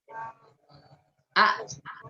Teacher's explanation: Jadi ketika kita mengucapkan, suaranya itu tertahan. Aliran suaranya tidak mengalir, tetapi tertahan. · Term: syiddah